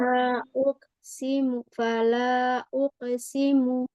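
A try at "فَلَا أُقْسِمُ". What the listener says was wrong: Jangan ukesimu. Bukan uke. Tapi ko, ukosi. Uko.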